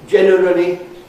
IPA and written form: ˋʤenərəli (generally)